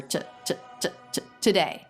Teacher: this is always with a schwa don't make the u vowel make it much faster